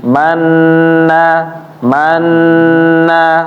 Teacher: nunnya bertasdid Oleh karena itu harus ditahan